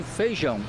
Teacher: em muitas regiões a vogal e quando está com outra desaparece